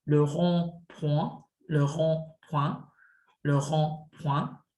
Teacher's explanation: ON is pronounced like on, but it's a more closed sound, on. So imagine you're trying to say O, but with your lips pursed.